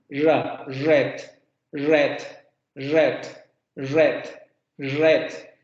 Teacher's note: Este fonema ocurre con la punta de la lengua aproximándose a la parte de los alvéolos.